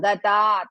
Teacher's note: ta is dirgha, ga is hrisva